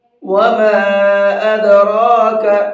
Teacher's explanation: وما کے الف کو تھوڑا سا زیادہ کھینچیں گے، 1 سے 3 الف کے برابر۔